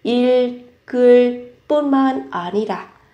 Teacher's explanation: động từ 읽다 nó kết thúc bằng phụ âm nên các bạn sẽ gắn 을 và các bạn sẽ đọc nối âm